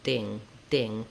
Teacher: I would close off the air for the D, build up pressure, and then burst it out. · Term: strong D